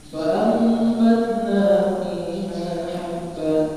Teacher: Nun bertemu dengan ba iqlab. Jadi perhatikan di sini pasti ada mim kecilnya.